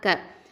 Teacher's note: காஃப் அப்படிங்கிறது அக்கசல் லிசான், கீழ் நாவு எழுத்து.